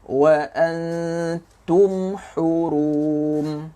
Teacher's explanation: Nampak mim tu dikejapkan lah dan tak ada dengung.